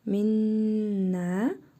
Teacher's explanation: Nun hərfini burnumuzda tələffüz edərək bir əlif miqdarı uzadırıq. Bu nun hərfini isə şəddəli tələffüz edirik. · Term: idğam-ı misliyin məal qunnə